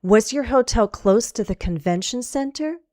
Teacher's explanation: So we form the questions, and as we ask them, be aware of the intonation. If it's a yes/no question, you're going to rise.